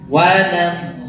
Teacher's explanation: Lamnya double. Jangan 1,5 lam, jangan triple lam. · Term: double lam